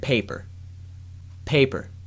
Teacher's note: notice that a small puff of air moves the paper with the first p but not with a second